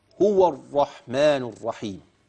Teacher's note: را شده وفتحه تبقى الرا يعني الصوت ايه الراء مفخمه